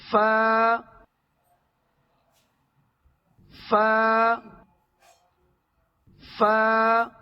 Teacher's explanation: اوپر کے سامنے والے دو دانتوں کے کنارے نیچے والے ہونٹ کے گلے حصے سے ملا کر ادا ہوتا ہے. فا فا فا یہاں یاد رکھیں کہ دونوں ہونٹ نہیں ملانا ہے.